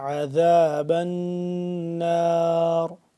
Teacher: عین کو حلق کے درمیانی حصے سے اور کھچاؤ پیدا کر کے ذال کو نرمی سے پڑھیں گے.